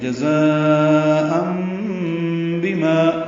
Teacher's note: تنوین کے بعد با آنے کی وجہ سے اقلاب ہو رہا ہے تو ان کی جگہ ام پڑھیں گے